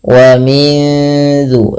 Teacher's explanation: Nunnya di makhraj nun tapi disamarkan ke zal. Wa min zur seakan-akan langsung melafalkan daripada huruf zalnya. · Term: ikhfa